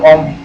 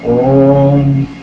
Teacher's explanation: ये ह्रस्व स्वर से 3 गुना समय लेते हैं, प्लुत स्वर कहलाते हैं